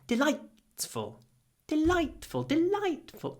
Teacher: make your I really light because it comes before an unvoiced t.